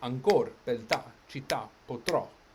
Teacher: Whereas tronco flips it and we get ancor, beltà, città, potrò, yeah? Where the last syllable is the one that carries the stress.